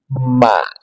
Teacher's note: mim dua bibir dipertemukan dan dirapatkan di ghunah dari rongga hidung